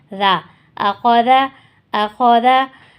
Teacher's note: ذال اگین نرمی والا حروف ہے، اس کو ہم نرمی سے پڑھیں گے، اس کو ہم زا نہیں پڑھیں گے